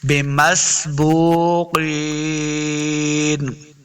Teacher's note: قاف حروف مستعلیہ سے اس کو موٹا پڑھیں گے، قاف زیقین، یا مدہ ہے، اس کو دو حرکات لمبا کرنا ہے